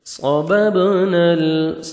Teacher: ہے، 1 سیکنڈ آپ نے نون کو کھینچنا بھی ہے، صَبَبْنَا صاد کو موٹا کر کے پڑھیں گے اور با حروف قلقلہ میں سے ہے، ڈبل ساؤنڈ آئے گا